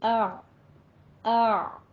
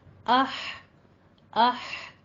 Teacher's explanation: वस्ते हलक, यानी हलक का दरमियानी हिस्सा, इससे आइन और हा निकलते हैं। इसको हम इसी तरह अदा करेंगे, आ आ।